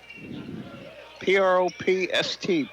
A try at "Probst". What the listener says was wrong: And I pronounce it Probst. That's how I see it, but I know a Probst. But it's B-S-T, not P-S-T, so. With a B.